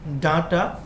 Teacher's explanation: ডাটার ড টা হচ্ছে ঘোষ অল্পপ্রাণ